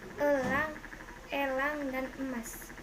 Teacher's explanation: Vokal E kriterianya vokal tengah sedang tak bundar semi tertutup